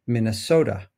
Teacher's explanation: the syllable so in the word Minnesota. That's a syllable with stress. If you think about it, you'll notice that it's the most prominent syllable in that word.